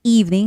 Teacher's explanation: Evening has the first syllable stress and then the word remember has the second syllable stress.